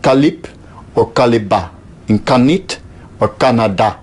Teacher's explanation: at the end of a word in turkish every consonant is always voiceless